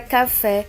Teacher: Na palavra café, podemos perceber que o acento agudo está em cima da letra E. Ele está indicando que a sílaba fé é a sílaba que tem um som mais forte. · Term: sílaba tônica